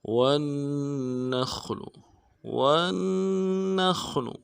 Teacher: واو کو نون کے ساتھ ملانا ہے، نون کے اوپر تشدید ہے، زور دیں گے، اور نون کو خا کے ساتھ ملانا ہے، خا کو موٹا کریں گے، لام کو رن سے ادا کریں گے.